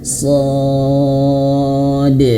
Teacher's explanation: dalnya pantulkan dengan pantulan yang jelas. Jangan asa-asa ya. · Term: qalqalah